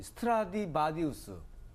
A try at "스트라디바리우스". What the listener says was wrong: 바디우스가 아니라 바리우스.